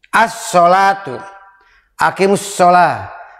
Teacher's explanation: Maka lamnya tidak dibaca, dihilangkan. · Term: idgham